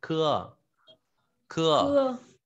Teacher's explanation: K giống cưa. Chữ khờ nhưng bật nhẹ hơi ta đọc là khưa